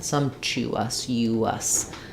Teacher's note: Actually not a y sound here. This vowel-to-vowel linking would be a w sound because I'm moving from a rounded vowel to an unrounded vowel.